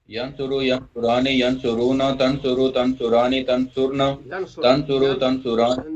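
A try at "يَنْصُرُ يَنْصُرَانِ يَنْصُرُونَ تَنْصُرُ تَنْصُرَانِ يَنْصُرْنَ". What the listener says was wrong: یہ دیکھیے ینصرن آئے گا، دو تین تا کے بعد پھر یا آئے گا.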